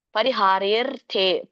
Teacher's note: ದೀರ್ಘ ಇದೆ ಹಾಗೆ ಎಳಿಬೇಕು ಪರಿಹಾರರ್ ಮತ್ತೆ ಥ ಕ್ಕೆ ಅರ್ಕವಳಿ ಇದೆ ಪರಿಹಾರರ್ಥೆ ಥ ಅನ್ನೋಕಿಂತ ಮುಂಚೆ ರ ಹೇಳಬೇಕು ಆಮೇಲೆ ಥೆ ಅನ್ನೋದು ಎಳಿಬೇಕು